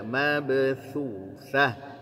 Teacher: Mabthuthah, bukan mabe tapi mabe, tipis ba-nya, qalqalahnya juga tipis karena dia bukan tebal seperti qaf. Mabe ya, mabthuthah.